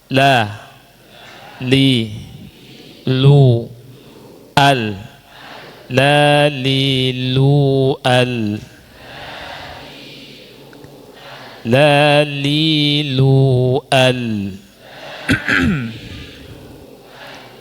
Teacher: Jadi posisi lidah pada gusi dan gigi dari gigi-gigi bagian atas. Posisi lidah kita ketika mengucapkan huruf lam itu berhadapan dengan dua gigi geraham pertama, dua gigi taring, dua gigi seri samping, dan dua gigi seri.